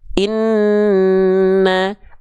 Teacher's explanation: contoh pada huruf nun bertasdid Inna n-nya ditahan dulu kan karena Nun bertasydid punya sifat gunah kalau ada gunah artinya dengung tahan dua harakat dengungannya Inna Begitu pun pada huruf mim bertasydid